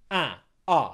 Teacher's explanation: For a, my tongue is slightly further back and more relaxed in the mouth. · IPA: /ʌ/